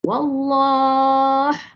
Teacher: Tetapi jika kita waqaf, makanya dia akan jadi mad arid li sukun, ya. Mad arid sukun 4 atau 6 lah, dan ada sifat hamas di hujung dia. Wallah, tekan sikit ha tu bagi nampak dia punya ha.